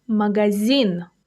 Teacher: The stress falls on the last syllable.